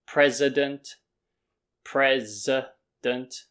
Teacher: this middle sound is flat because the stress is on president yeah at the beginning